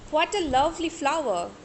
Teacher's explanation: putting stress on love, and we are using falling tone also at the same time